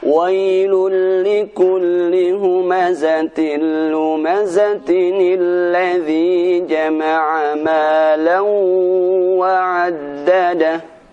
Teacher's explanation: ketika kita menyambung ayat pertama ke ayat kedua dari surat Al-Humazah, maka akan terdengar suara nun kasrah. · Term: nun wiqayah